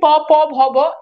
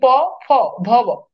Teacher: ঠোঁট, দুইটা ঠোঁট একত্রিত হয়, ঠোঁট থেকে তৈরি হয়। এই জন্য এগুলোকে বলা হয়, এগুলো হচ্ছে ওষ্ঠধ্বনি।